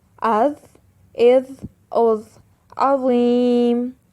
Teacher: حرف ضا اور حرف ضاد، ان کی آواز بھاری ہے، یہ موٹے حروف ہیں۔